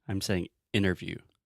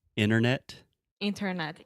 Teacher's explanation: when we say interviews I do not pronounce the T so I'm not saying interview I'm saying interview in their view